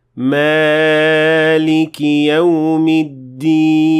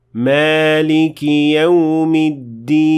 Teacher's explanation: The word Malik again contains an alif. There is no reason to extend it more than 2 harakat.